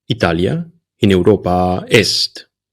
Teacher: In the first sentence, the final vowel of Italia is long, a. In the second sentence, the final vowel of Italia is short, a.